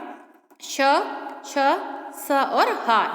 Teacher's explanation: इस व्यंजनों के उच्चारण में एक प्रकार की सुरसराहट होती है, अर्थात उच्चारण करते समय वायु रगड़ खाती हुई मुख से बाहर निकलती है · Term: ऊष्म व्यंजन